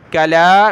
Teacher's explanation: लाम को एक अलिफ की लिमिट में खींचेंगे , खड़ा ज़बर है, कला, मीम को लफ्ज़ अल्लाह के साथ